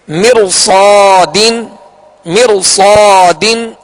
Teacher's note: اسی طرح ایک ہی کلمے میں را ساکن سے پہلے زیر اصلی ہو اور اس کے بعد حروف مستعلیہ ہو تو را ساکن کو پر یعنی موٹا پڑھیں گے